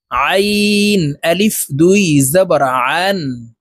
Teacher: আইন হরফ হলকের মধ্যখান থেকে চাপ দিয়ে উচ্চারণ করব